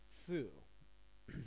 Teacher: sometimes it can be very commonly mistaken with su, but tsu actually has a stronger T sound.